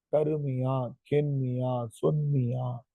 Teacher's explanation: மீ என்கிற எழுத்து தனக்குரிய ஒரு மாத்திரையில் இருந்து அரை மாத்திரையாக குறுகி ஒலிக்கும்.